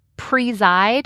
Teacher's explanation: you might even emphasize the first part preside where you might clearly hear a long e. But if not, that second syllable presside, I clearly hear a long i.